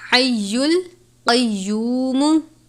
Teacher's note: قاف کو پر پڑھنا ہے